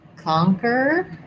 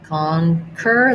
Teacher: The letter O says ah, which it typically does in stress syllables.